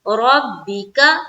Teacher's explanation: را کو پر رکھنا ہے، با سے ملائیں گے